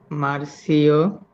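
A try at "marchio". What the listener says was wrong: মার্কিও, আপনি চির উচ্চারণ এবং সি অক্ষরের উচ্চারণ এবং জি অক্ষরের উচ্চারণ শিখেন নাই।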